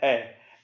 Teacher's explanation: ए में क्या हो रहा है, जीभ बिल्कुल बीच में अटक गई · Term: मध्य